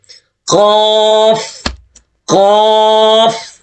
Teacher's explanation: یہ سب سے موٹا حرف ہے، اس زبان کی جڑ اوپر تالو کی طرف اٹھتی ہے